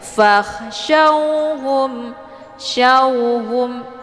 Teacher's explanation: Jadi syaw di sini ada waw sukun, sebelumnya harokat fathah, ini dinamakan dengan harfulin. Jadi cara bacanya dilembutkan saja.